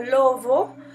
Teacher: tenemos que es bilabial fricativa sonora